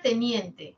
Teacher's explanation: tiene la media anterior la alta anterior y en general son anteriores